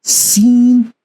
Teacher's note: this has whistling sound it is not pronounced softly